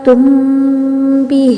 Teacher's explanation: میم پڑھ رہا ہے تو ہونٹوں کے بیرون حصے یعنی کہ خشکی والے حصے مل رہے ہیں، پھر با پڑھ رہا ہے تو اندرون یعنی گیلے والے حصے مل رہے ہیں